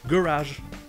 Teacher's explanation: la première syllabe n'est pas accentuée, donc vous trouverez le son E ou E.